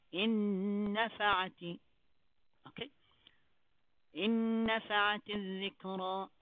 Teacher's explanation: You will not read three noons here. You will read two noons.